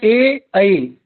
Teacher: ए ऐ जो स्वर हैं वो हमारे कंठ तालु से होते हैं उच्चारण